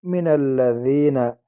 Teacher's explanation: ثم کان من الذین لام کو باریک پڑھیں گے، لام مشدد ہے، 2 مرتبہ پڑھا جاتا ہے. من الذین یا مدہ یا ساکن آگے زیر ہے، ایک الف کی مقدار اس کو کھینچیں گے.